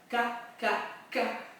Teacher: Et donc le K, c'est avec la langue sur toute sa largeur qui dépasse. Et on prend vraiment appui sur les côtés du haut du palais dur